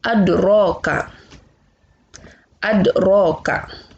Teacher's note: Berarti cara melafalkan huruf dalnya tidak terlalu tebal. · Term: qalqalah sugro